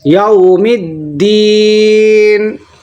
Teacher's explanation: یہاں پر واو لین ہے, نرم آواز کے ساتھ جلدی پڑھیں گے